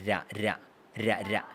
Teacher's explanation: പല്ലിന്റെ തൊട്ടുപുറകിലായിട്ടുള്ള ഏരിയയിൽ തൊട്ടുപുറകിൽ രണ്ടു മൂന്ന് തവണ ടാപ്പ് ചെയ്തിട്ടാണ് ര പറയുന്നത്. റ റ പറയുന്നത് അവിടെ തൊട്ടുമുന്നേക്ക് വരുമ്പോഴാണ് ര ര ര ര ഇതിങ്ങനെ · രാ പറയുമ്പോൾ ഈ ആൽവിയോളർ റിഡ്ജ് എന്ന് പറയും, നമ്മുടെ ഇതിൻ്റെ പല്ലിൻ്റെ തൊട്ട് പുറകിലായിട്ടുള്ള ആ ഏരിയയിൽ തൊട്ട് പുറകിൽ 2-3 തവണ ടാപ്പ് ചെയ്തിട്ടാണ് രാ പറയുന്നത്.